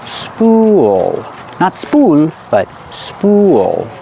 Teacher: when you connect the ooh to the dark L you make an extra sound